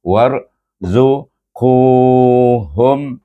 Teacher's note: ku pun mad asli, sebab selepas qaf baris depan itu, ku itu ada waw, panjang kan bunyinya.